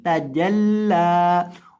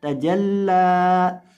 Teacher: इसको आपने तजल्ला यानी जीम को आपने इस तरह से नहीं पढ़ना, इसकी आवाज़ आएगी तजल्ला। और लाम को आपने एक अलिफ के बराबर लंबा करना है, बहुत ज़्यादा लंबा करके नहीं पढ़ना। अगर आप लाम को बहुत ज़्यादा लंबा कर देंगे तो ये भी ठीक नहीं है।